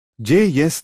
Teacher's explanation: J voiced approximant palatal